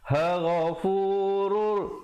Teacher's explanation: idgham bila gunnah, terus masuk tanpa dengung